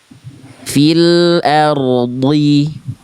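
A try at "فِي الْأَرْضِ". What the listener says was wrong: Nah, tapi ro-nya jangan jadi samar. Ro-nya getarannya tetap jelas.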